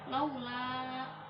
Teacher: Lu di situ mat tobi'i karena harokat domah, setelahnya wawu yang disukun, panjangnya 1 alif.